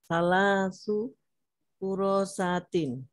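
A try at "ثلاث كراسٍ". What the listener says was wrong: Ada roknya ditasdidkan ya. Kurosatin. Roknya ditasdidkan panjang. Kurosatin.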